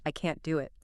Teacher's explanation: in the negative, I can't do it, we almost always stress can't, because the negative meaning is important.